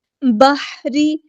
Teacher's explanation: پہ لام قمریہ ہے، اس کو ہم ظاہر کریں گے۔ بحری، ہا کو وسطی لیکن مڈل تھروٹ سے ادا کریں گے ، را باریک لائٹ لیٹر ہے یہاں پر۔ فی البحر بما